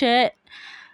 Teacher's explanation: जब हम बोलते हैं श तो उसका होता है तालव्य